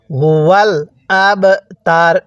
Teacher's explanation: এখন আমরা এই বা এর মধ্যে ধাক্কা দিয়ে পড়বো কারণ বা টা হলো কলকলার হরফ